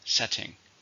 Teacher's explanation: How many syllables are in setting? 2. Stresses on the first.